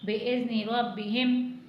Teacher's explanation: रॉ को मोटा पढ़ना है, रॉ को बा से मिलाएंगे